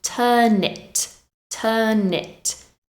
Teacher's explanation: the N at the end of turn links together with the I from it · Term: linking, Linking